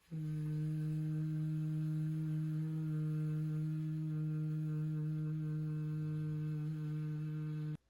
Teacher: Le V, ce qu'on va rajouter en plus, c'est une vibration. On va venir mettre les dents sur la lèvre inférieure et produire le son V.